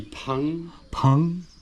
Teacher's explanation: le P, ça se dit avec une inspiration, on dit pang